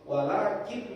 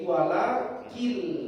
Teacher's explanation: Sudah ada tasdid, makanya bunyi walakin, n-nya hilang, berubah jadi lam. Walakin menjadi walakil. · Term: idgham